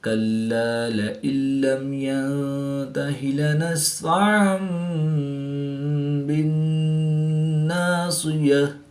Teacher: نون ساکن کے بعد تا حروف اخفا میں سے ہے تو یہاں پر اخفا ہوگا، یعنی غنہ زمانی کر کے پڑھیں گے۔